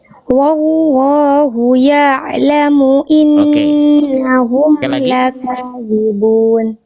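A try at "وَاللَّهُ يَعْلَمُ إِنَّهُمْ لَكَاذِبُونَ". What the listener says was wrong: Sekali lagi dari awal dari wallahu ainnya tadi masih agak kaku sedikit. Biarkan suaranya dialirkan sedikit.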